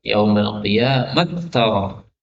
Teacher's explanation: Ini ta ketemu ta, maka boleh dibaca dengan idgham.